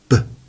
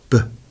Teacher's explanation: The lips come together and just let go in a little explosion of air as it goes B.